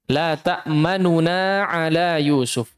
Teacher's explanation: Nu-nya huruf nu yang berharakat dhammahnya dibaca dengan sebagian harakat saja. Itu namanya raum. Dibaca dengan cara raum.